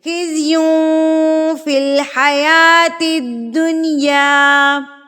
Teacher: غنہ خفیف یعنی کہ اخفا کریں گے، ناک میں آواز کو چھپائیں گے